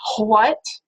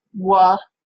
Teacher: you get sort of this voiceless W or a cluster of H plus W instead of just plain old wa, plain old glide there in front of, in that beginning of that word.